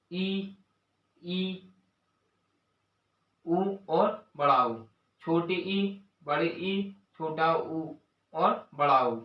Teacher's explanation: संवृत स्वरों के उच्चारण में जीभ सबसे ऊपर रहती है